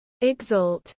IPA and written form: ɪɡˈzɒlt (exalt)